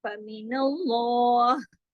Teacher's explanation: अल्लाह के नाम में जो लाम है उसको हैवी करके पढ़ेंगे, लाम जलाला कहलाता है।